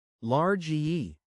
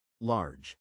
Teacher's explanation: I was saying large-ee with a distinct R sound at the end, almost like two syllables, instead of the softer, more blended, large.